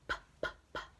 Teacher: your voice is turned off with the P sound